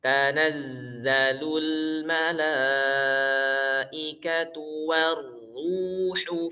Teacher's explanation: mengucapkan za itu jangan ada angin ya ikhwah, jangan ada angin, alirkan aja suaranya karena memang sifatnya rokhawah bukan hams. Zai itu sifatnya rokhawah bukan hams ya, ada rokhawahnya tapi nggak ada hamsnya.